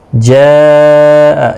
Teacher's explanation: جاء یہاں پر مد متصل ہے، 4 الف کی مقدار کے برابر کھینچ کر پڑھیں گے